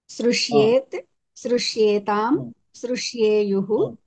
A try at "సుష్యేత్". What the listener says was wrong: శృ కాదు కదా మహోదయ కదా మహోదయ షూ కదా.